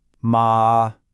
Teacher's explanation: First up is the high note, or the first tone. Just imagine you're singing and you hold a high, steady note. Ah. No ups, no downs, just flat.